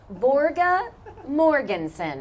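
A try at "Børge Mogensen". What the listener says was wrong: There's no R.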